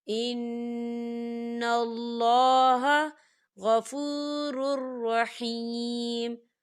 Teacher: اللہ کا نام جو ہے پر پڑھا جائے گا، موٹا پڑھا جائے گا، کیونکہ اللہ کے نام سے پہلے زبر ہے